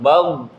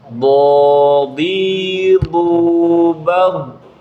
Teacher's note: Jadi ketika dia sukun harus ada dorongan, nggak berhenti suaranya, tapi ada suara yang mengalir.